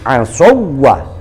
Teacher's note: Kebetulan di sini hidupnya adalah harokat fathah, maka persis cara bacanya seolah-olah wawu yang kedua ini wawu tasydid. Nah, sementara yang kita tahu wawu tasydid itu bacanya tidak gunnah, tidak dengung.